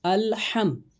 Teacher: حلق کے درمیان والے حصے سے ہا نکلتا ہے، اس کی ادائیگی درست رکھنی ہے۔